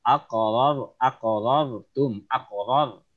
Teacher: ujung lidah menyentuh ke langit-langit atas, tapi nggak ada vibrate, nggak ada getaran, nggak ada R gitu, tapi R.